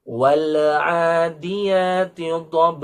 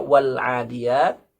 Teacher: membaca Alif Lam Qomariah sama seperti kita mengucapkan huruf L dalam bahasa Indonesia tidak perlu di membalikkan